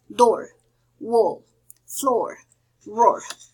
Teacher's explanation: The next one, it's called the open mid back, and the pronunciation is oh, like door, wall, floor, roar.